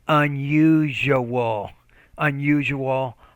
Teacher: you're having trouble with that palatal consonant